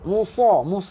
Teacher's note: sa tebal ya, sa tebal. Muncung mulut sikit. Musa. Muncung mulut sikit saja.